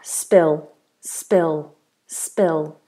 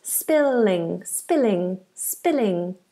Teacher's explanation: if it was spill on its own this would be dark spill spill spill but because we're saying spilling it becomes kind of light because we got the ing at the end which is quite bright